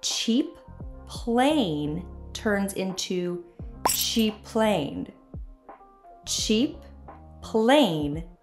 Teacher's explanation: two P sounds are together so the words share the sound